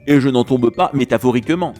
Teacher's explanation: Métaphoriquement ne peut pas se couper, et donc ce mot est dit un peu plus vite et contribue à l'effet comique de ce vers.